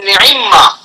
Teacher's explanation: نعمما 2 حرف مکرر آ گئے، پہلا بھی متحرک اور دوسرا بھی متحرک، تو امام حفص نے یہاں اس میں ادغام کیا ہے